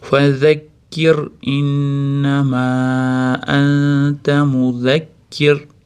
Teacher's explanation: R beda ingichka ro aytiladi.